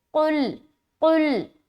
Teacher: قاف کو بالکل حلق سے نکالنا ہے